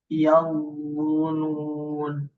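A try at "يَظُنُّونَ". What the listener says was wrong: Nun bertasdid, ya, nuna. Nah, nanti nun bertasdid dilamakan Pak ya. Yaununa, yaun dilamakan ya dalam pengucapan ini.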